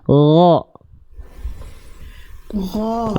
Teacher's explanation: goin dilafalkan dari tenggorokan paling atas, sama kayak huruf kho tapi nggak keluar nafas. Alirkan suaranya, lemesin.